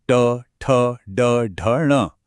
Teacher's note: ये है मूर्धन्य वर्ण। इनका उच्चारण स्थान है मूर्धा, जो तालु के ठीक पीछे का कठोर हिस्सा होता है।